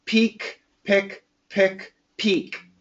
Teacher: when you do the E, the sound goes up and out. And when you do the short I, the sound just falls out.